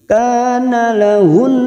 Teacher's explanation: nun yang bertasdid gunnah musaddadah, ditekan dan ditahan selama 3 harokat. Mendengung dan ditahan selama 3 harokat gunnah musaddadah. · ka fathah diikuti alif 2 harokat matobi'i